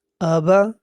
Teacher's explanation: نہ حمزہ کو نہ زبر کو لمبا کرنا ہے، اور نہ زیر کو لمبا کرنا ہے، اور نہ پیش کو لمبا کرنا ہے، حرکات کو لمبا نہیں کرنا ہے۔